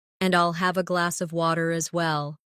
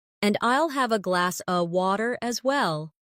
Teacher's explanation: In connected speech, glass of sounds like glass a.